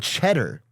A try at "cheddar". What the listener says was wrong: You said chutter, like a chud. Chutter sounds like grinder, but for like conservatives. I guess no difference, huh? Chud. CHUD. Yeah, like a cow's chudder. Like if a cow ate so much cheese, it came out of its udders. That's a chudder. Cheddar, yeah, cheddar.